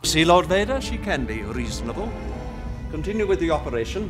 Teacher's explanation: It's received pronunciation, or RP, in which all the words are pronounced very clearly, sometimes with a slightly rolled R.